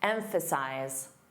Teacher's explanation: The verb emphasize z a voiced sound at the end